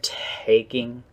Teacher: the T sounds like there's a little exhale on there